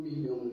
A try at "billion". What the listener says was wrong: But you have been pronouncing like million.